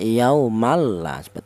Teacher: Adapun artinya bila ghunah itu dibaca tidak ada suara berdengung